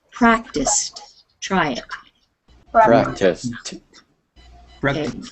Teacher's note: instead of the D sound on the end, it sounds more like a T.